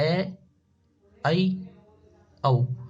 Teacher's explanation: यानी इनमें थोड़ा विवर्त से थोड़ा कम खुलता है, तो अर्धविवर्त में आता है।